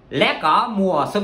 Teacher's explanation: lá là bổng, là bay lên. Cỏ là bổng, bay lên. Mùa là trầm, nó sẽ lặn xuống. Xuân là nó sẽ bay lên.